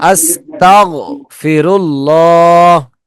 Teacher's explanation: আস্তাগ ধরে রাখার চেষ্টা করব যেন বাউন্স না করে